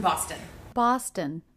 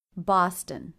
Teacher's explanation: another two syllable city name with stress on the first syllable so the second syllable unstressed must be short to contrast the